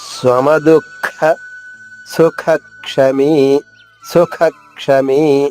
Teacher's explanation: దూ తర్వాత విసర్గ ఉంది, దాని ఉచ్చారణ మరొక ఖాలా చెప్పాలి. మహాప్రాణి ఖాలా అంటే ఇక్కడ 2 ఖాల్లా పలకాలి.